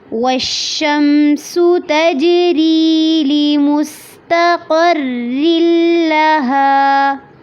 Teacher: وش پہ شین پہ آواز کو چلانا ہے